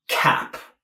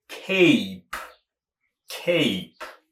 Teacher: That's a flat A, cap. But the round sound of that A would be cape